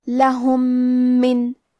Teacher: کلمت من، میم حروف الادغام میں سے ہے، تو ہم پہلے میم کو دوسرے میم میں ملا کے ایک ہی میم اور تشدید کے ساتھ پڑھیں گے